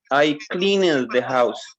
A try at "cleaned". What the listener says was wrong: Clean it. Remember, we cannot say clean it. You need to categorize with T, D, or it. So clean, is that cleaned, or clean it? What is the pronunciation of clean?